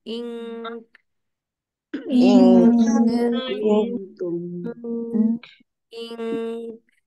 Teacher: काफ के मखरज पे रहते हुए आपने इख्फा करना है